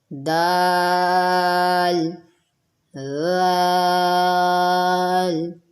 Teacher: ذال نرم حرف ہے، نرمی سے ادا کریں گے، اس کی سیٹی کی آواز بالکل نہیں آنی چاہیے